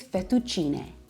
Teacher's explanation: In Italian, the e at the end makes the eh sound,